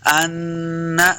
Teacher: نون مشدد ہے، حمزہ کو نون کے سامنے لائیں گے، غنہ کرنا ہے۔